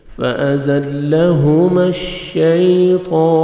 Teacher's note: طا کو موٹا کر کے پڑھیں گے، کھڑا زبر ہے 1 سیکنڈ کھینچیں گے طا کو